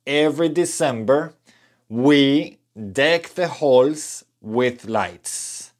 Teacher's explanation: observen que estoy juntando las palabras cuando pronunciamos